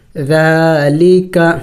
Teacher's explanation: ذال کڑی زبر، ذال نرم حروف میں سے ہے اور کڑی زبر بھی ہے، تو کڑی زبر کو ایک الف کے مقدار کھینچا جاتا ہے